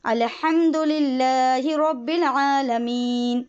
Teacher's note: للہ میں لام باریک، را کو پر پڑھیں گے